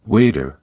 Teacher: In American English, it often sounds like waiter, with a soft D sound. In British English, it's more like water, with a clear T sound.